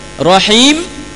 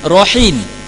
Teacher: Maksud dia mim bertukar dengan nun.